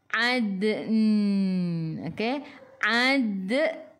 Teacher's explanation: Okey kelas, kita masuk dulu dalam dal. Kita matikan dengan huruf nun. Hujung lidah menyentuh gusi atas.